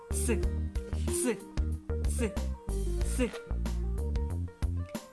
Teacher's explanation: кінчик язика в нас притискається до верхньої зубів і струмінь повітря проходить між зубами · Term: звук ц